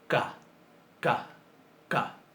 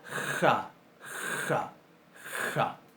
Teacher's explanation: Si le sacamos el puntito, pero mantenemos el mismo punto de articulación y mantenemos el mismo modo de articulación, que es decir, sorda, sin acción de las cuerdas vocales, pero en vez de oclusiva la volvemos fricativas, nos queda una J, o uno de los tipos de J que nosotros conocemos, porque manejamos varios, pero todos los escribimos igual, que es la ja, ja, ja.